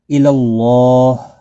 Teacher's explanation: فی یا مدہ ہے، اس کو بھی ایک الف کی مقدار کے برابر کھینچ کر پڑھیں گے، ہی کو کھینچنا نہیں۔ اللہ، اللہ کا لام اس زبر کی وجہ سے پر پڑا جائے گا، موٹا پڑا جائے گا، اس کے اوپر کھڑی زبر بھی ہے، ایک الف کی مقدار کے برابر کھینچ کر پڑھیں گے، اور وقف کی صورت میں ہا ساکن پڑھا جائے گا، ملانے کی صورت میں اپنی حرکت کے ساتھ ہا پڑھا جائے گا۔